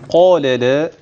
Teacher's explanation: القاف والالف تفخم لكن اللام بعد كده ترقق